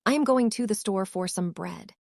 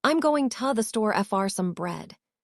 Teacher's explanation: Can you hear how the prepositions almost disappear? They become whispers.